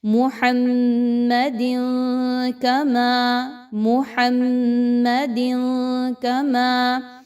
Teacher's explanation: نون کی آواز کو آپ نے ناک میں چھپانا ہے اور غنہ بھی کرنا ہے، محمد کما، محمد کما، اگر آپ یہاں پہ وقف کر رہے ہیں تو پھر محمد اور پھر کما سے سٹارٹ کریں، ٹھیک ہے۔ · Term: اخفا